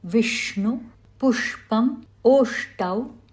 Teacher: The next consonant, sh, is a deeper sound. The tip of the tongue is curled in towards the roof of the mouth and the air is reflected off the roof. It is a murdhanya or a retroflex sound.